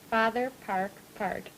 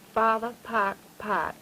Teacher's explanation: a good stout retraction of the tongue sort of curled back when you say park